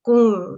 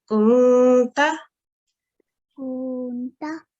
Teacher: we just say kun, slightly with a nasal sound